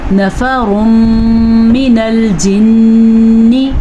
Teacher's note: ادغام بالغنہ کی وجہ سے میم پہ غنہ ہو رہا ہے اور نون پہ شد کی وجہ سے بھی غنہ ہو رہا ہے۔